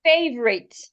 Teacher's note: in this word the O and the U should not be heard it doesn't have three syllables it has two syllables